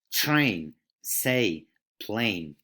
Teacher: A new diphthong, which is very simple. It's two Spanish vowels, E and I.